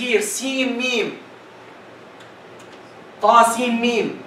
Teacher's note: When I connect seen with meme, there's a rule that will be resulted, which is idgham with ghunna